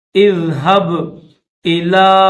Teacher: لام کو تھوڑا کھینچیں گے، چھوٹا سا الف ہے۔